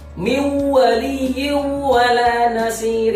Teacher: Jadi yang nun sukun masuk kepada huruf waw dan juga kasraten masuk ke dalam huruf waw. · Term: idgham biguna